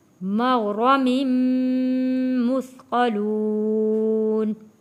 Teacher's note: فَهُمْ من مغرم، غین اور را موٹا پڑھیں گے، میم جڑے گا تشدید والے میم کے ساتھ۔